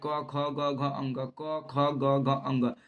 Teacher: क ख ग घ अंग, कंठ से आवाज आएगा तो इसको बोलते हैं क वर्ग। और क वर्ग का उच्चारण कंठ से होता है।